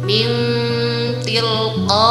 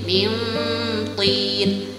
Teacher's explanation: min ada dengungnya tapi nunnya juga ada. Min tilqa itu yang bertemu dengan huruf ta. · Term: ikhfa akrab